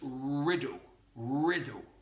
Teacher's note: So, with the word called, we're using a dark L, but he vocalizes it. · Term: vocalization of the dark L